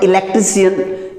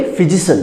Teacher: जो word CIAN पे खत्म हो जाए तो उस वर्ड का उच्चारण क्या हो जाएगा शॉ हो जाएगा।